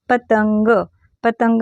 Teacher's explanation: पतंग मध्ये होतो का नाही ग ला न जोडल्यासारखा उच्चार होतो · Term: अनुस्वाराचा उच्चार